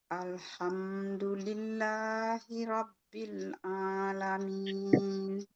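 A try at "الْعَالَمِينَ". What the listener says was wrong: Lagi, A-nya ini ketengahin lagi. Alamin. Coba alamin.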